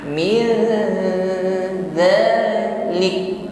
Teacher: Jadi samar atau ikhfa di sini. Dalam proses menyamarkan nun sukun pada huruf dal ada bunyi dengung. Dengungnya ringan, bukan miu dzalik, tipis dengungnya.